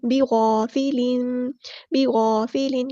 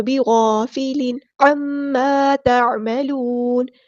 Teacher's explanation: عین کو مستحلق یعنی مڈل تھروٹ سے ادا کرنا ہے اور یہاں پر نون ساکن کر دیں گے وقف کرتے ہوئے